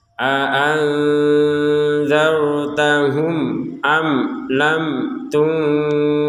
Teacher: Nah, di sini mim sukun bertemu hamzah, sama dengan mim sukun ini juga bertemu hamzah, maka dibaca sama-sama dengan jelas